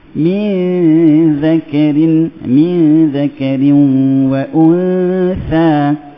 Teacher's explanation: Inna khalaqnakum min ke arah huruf zal, hujung lidah menyentuh hujung gigi. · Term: ikhfa